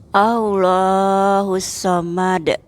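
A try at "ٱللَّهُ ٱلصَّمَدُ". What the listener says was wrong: Lamnya dipendekin dikit, Ibu. Allahus Samad.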